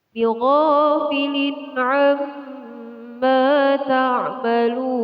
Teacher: Lun adalah hukum bacaan mat, yaitu mat aridil sukun yang panjangnya 1 alif, 2 alif sampai 3 alif atau kira-kira 6 ketukan